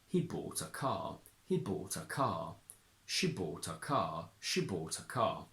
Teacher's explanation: If we take these two as standalone sentences, we would stress bought and car and say, he bought a car, he bought a car, she bought a car, she bought a car.